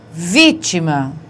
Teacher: Não é a última, não é a penúltima, é a antepenúltima sílaba que é a forte, portanto, uma proparoxítona.